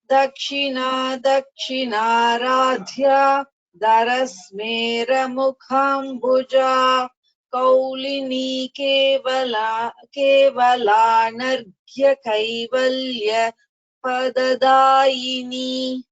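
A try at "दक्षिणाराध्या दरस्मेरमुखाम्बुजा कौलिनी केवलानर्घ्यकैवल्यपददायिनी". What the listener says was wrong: Yes, you chanted all the Mahapranas correctly. In the second line, maybe because it is a big sentence, you should actually it has to be chanted together. So you should not take a break anywhere.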